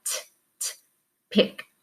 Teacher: One of your words is p, so pick, but we're going to add the ed. Now, because the k sound, feel right here and say k, it's an unvoiced sound, so the ed is going to sound like a t.